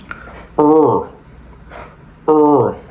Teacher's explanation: Entonces, para pronunciar la R, nos ubicamos justo en el paladar blando. Lo que tienes que hacer es empujar la lengua lo más atrás que puedas para poder pronunciar entonces.